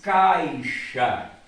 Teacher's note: o som que sobressai é A. Portanto, A é vogal, I é semivogal.